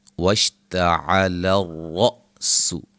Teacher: را کو موٹا حمزہ کو جھٹکے سے